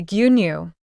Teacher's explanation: Guinu means milk. Notice that it has stretched vowel sounds. Do not rush it.